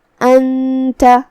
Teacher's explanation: تا حروف الاخفاء میں سے ہے اور اخفاء کا معنی ہے چھپا دینا، تو ہم یہاں نون ساکن کو چھپاتے ہوئے لیکن غنہ کے ساتھ یہ حکم کو ادا کریں گے